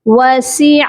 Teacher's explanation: عین کا sound middle throat سے آتا ہے, یعنی کہ درمیان والے حلق سے اس کی پروناؤنسیشن ہوتی ہے